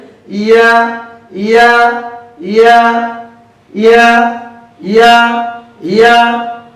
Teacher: জিহ্বার মধ্যখান তার বরাবর উপরে তালুর সঙ্গে লাগিয়ে ইয়া হরফটি উচ্চারিত হয়। ইয়া হরফটি পড়ার সময় আওয়াজ নরম হবে, চিকন হবে, নিচের দিকে দাবিত হবে, বাতাস বন্ধ, আওয়াজ চালু।